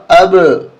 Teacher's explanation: وعلا، حمزہ با زبر اب، یہاں قلقلہ ہوگا، اب، आवाज़ टकरा कर आएगी, अब यानी बा की डबल आवाज़ आएगी।